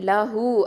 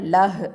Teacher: லஹு அப்படின்னு இருந்துச்சுன்னா நிப்பாட்டும் போது லஹ் அப்படின்னு வரும்